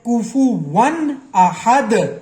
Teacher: تو یہاں پہ ہم واو دو زبر ون غنہ نہیں کریں گے کیونکہ آگے حروف حلقی آ گیا، اس لیے یہاں پہ ہم اظہار کریں گے کوفو ون احد، ٹھیک ہے جی.